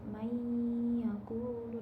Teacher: dibacanya dengung dengan memasukkan huruf pertama ke huruf yang kedua